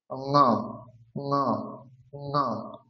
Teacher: যেরকম ক বর্গের উচ্চারণ হচ্ছে কণ্ঠ, তাহলে ক বর্গের যে নাসিক বর্ণ ঙ, সেটার উচ্চারণ হবে কণ্ঠের সাথে সাথে নাকে